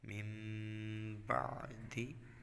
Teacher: اقلاب، نون ساکن یا تنوین کے بعد حرف با آ جائے تو اقلاب ہوگا، یعنی نون ساکن اور تنوین کو میم سے بدل کر اخفا کریں، یعنی غنہ کر کے پڑھیں